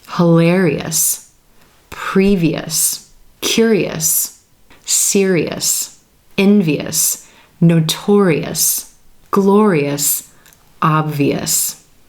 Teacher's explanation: sounds before that suffix it's going to sound like es es you're going to hear that e is in green and the two distinct syllables